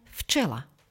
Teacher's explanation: Na začiatku slova napríklad včela čítame včela. Znelá párová spoluhláska v sa pri stretnutí s neznelou párovou č mení na neznelú párovú spoluhlásku f. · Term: spodobovanie